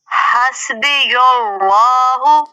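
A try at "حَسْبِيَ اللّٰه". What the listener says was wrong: یا کو پر نہیں پڑھنا، یا تو باریک رہے گا، اس میں جلالہ کا لام پورا پڑھا جائے گا. حسبی اللہ.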